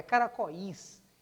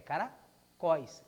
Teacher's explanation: aquele I da palavra caracóis é uma semivogal, porque ele é fraco